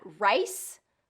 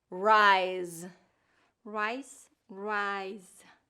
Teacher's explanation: that voice and voiceless difference for S and Z